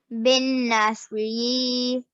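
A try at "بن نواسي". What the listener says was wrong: You've forgotten about the ba. Bin-nawasi.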